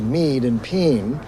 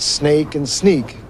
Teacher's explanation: A, as in maid and pain, becomes mead and peen, so that snake and sneak can sound the same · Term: rotation of the whole vowel system